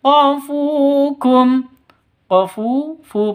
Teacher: Fu panjang dua ketukan karena ada wau mati diawali dengan Dom domah · Non mati bertemu dengan ya, idgham bi gunnah, masuk ke ya-nya disertai dengung. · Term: Mad thi'i